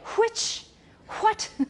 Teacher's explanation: some speakers of English also have the sound h before w, so they have the hua sound.